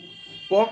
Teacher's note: प का जो उच्चारण जब हम लोग करते हैं तो दोनों होंठ जो है यानी ओष्ठ आपस में मिलते हैं, इसीलिए जो प का जो उच्चारण स्थान होगा वो क्या होगा, ओष्ठ होगा।